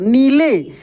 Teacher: न में बड़ी की मात्रा है तो जोर पढ़ेंगे खींच कर